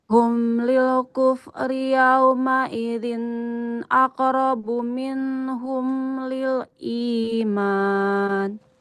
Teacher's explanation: kalau mim sukun itu dia aliran suaranya tidak terlalu lama ya